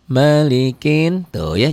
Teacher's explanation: Jadi ini bukan mad tabi'i, tidak dibaca panjang.